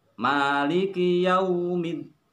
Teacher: Pengucapan yau jangan sampai miring sehingga mendekati bunyi o.